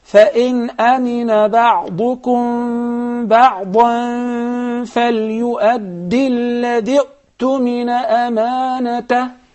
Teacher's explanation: Hamzat wasl, or connecting hamza, when we connect this word to the previous one, we drop this hamza. We do not read it.